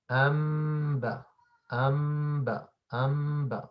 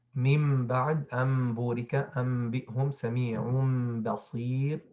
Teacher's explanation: changing the nun sakina or tanween at the ba into a meme that is hidden with a gunna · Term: Al-Qalb